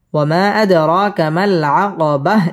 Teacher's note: র মধ্যে তাবাঈ এক আলিফ টানে পড়তে হবে এবং র পুর করে পড়তে হবে